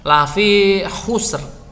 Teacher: Khoknya tebal, sinnya tipis, roknya tebal.